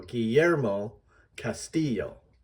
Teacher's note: the emphasis is on the second syllables